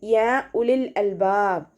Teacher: മദ്ദിന്റെ length രണ്ടോ നാലോ count നീട്ടിയിട്ടാണ് പാരായണം ചെയ്യേണ്ടത്ട്ടോ മദ് ജാസ് മുൻഫസില ആണ് അപ്പോ രണ്ടോ നാലോ കൗണ്ട് നീട്ടിയിട്ട് പാരായണം ചെയ്യാക